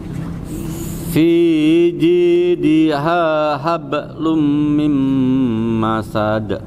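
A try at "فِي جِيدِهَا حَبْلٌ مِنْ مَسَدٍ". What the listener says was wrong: Ya, yang tadi catatannya sama dengungnya ya. Ada dengung tapi kurang ditahan tadi. Hablum mim itu dengung Pak.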